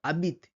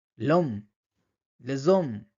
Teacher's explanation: প্রথম উচ্চারণটা নেক্সটের সঙ্গে জুড়ে গিয়ে একসঙ্গে কন্টিনিয়াস উচ্চারণ হচ্ছে